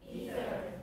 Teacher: so it's voiceless and interdental, fricative